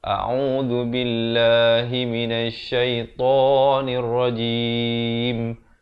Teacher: Baik, sahabat-sahabat dirahmati Allah, pastikan hamzah dan ainnya itu diberikan perbezaan yang jelas. Hamzah di pangkal kerongkong, ain di pertengahan kerongkong, zal itu di hujung lidah.